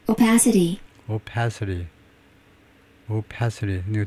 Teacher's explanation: 두 번째 실레블의 액센트가 있습니다.